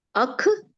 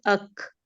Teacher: اکثر لوگ اس کا ہمس ادا کرتے ہیں کھے کی طرح کر دیتے ہیں، تو سمجھے آپ نے کاف ہے کی بنی کھے بنا دیا، اور یہ انتہائی غلط ہے.